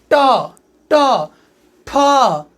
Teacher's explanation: जो उभरे हुए भाग के पीछे जो समतल जगह होता है वहां पे जाके हमारी जीभ टच करती है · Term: मूर्धा